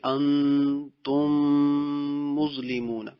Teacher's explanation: یہ میم چونکہ ہونٹوں سے ادا ہوتا ہے اس لیے اس کو ادغام شفوی کہتے ہیں